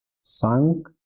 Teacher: Às vezes as pessoas vão engolir esse C, é comum, tá? Não é um pecado grave, mas é bom bem pronunciar, tá?